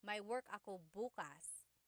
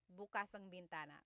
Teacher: That means open. If you say bukas, emphasis is on the first syllable. That means tomorrow.